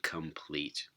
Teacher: in complete and it changes them into assimilated clusters here so in complete this nasal becomes velar before a velar stop